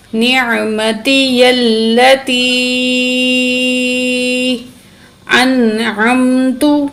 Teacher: تو یا ساکن سے پہلے زیر حروف مدہ بھی ہے، تو تقریباً 5 الف کے برابر یا کو کھینچ کے پڑھیں گے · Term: بڑی مد